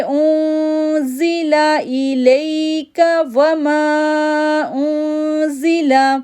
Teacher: اب ماں کو 3 سیکنڈ کے لیے کھینچیں گے کیونکہ اس کے اوپر چھوٹی مد آ رہی ہے، تو ہم کیسے پڑھیں گے یؤمنون بما انزل، انزل، اب حمزہ کو نون کے ساتھ جوڑیں گے تو غنہ کریں گے، اخفا غنہ